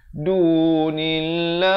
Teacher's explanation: Lafz jalalah di sini dibacakan nipis, datang sebelumnya baris kasrah. Dia baca dua harakat.